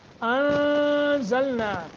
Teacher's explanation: نون ساکن ہے، زا ہے آگے، اخفا کریں گے